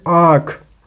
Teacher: अनुनासिक स्वर अनुनासिक के उच्चारण में मुंह से अधिक नाक से बहुत कम हवा निकलती है